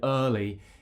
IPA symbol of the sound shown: ɜː